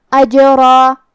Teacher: کلمت اجرن میں یہاں جیم ہے اور اس پہ جزم ہے، کیونکہ جیم حروف القلقلہ میں سے ہے تو ہم یہ حرف کو ہلاتے ہوئے یہ کلمہ کو پڑھیں گے